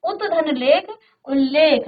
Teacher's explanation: अब यहां पांचवा एक नियम है कि यदि त के बाद ल आए तो त का आधा ल हो जाता है। देखो त के बाद ल आया है तो इस त का आधा ल हो जाएगा।